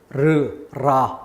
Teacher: 그 R은 떨다라는 글자 써서 설전음이라고 그래요. 떨림 소리, 르, 라 이렇게 떨리는 소리.